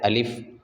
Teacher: الف کا مخرج جوف دہن ہے، یعنی منہ کا خالی حصہ۔ زبان کو کہیں بھی ٹچ نہیں کرنا پڑے گا، منہ کے خالی حصے سے الف ادا ہوگا